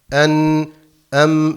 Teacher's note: gunne sesi çıkar En em dediğimiz zaman burundan gelen sestir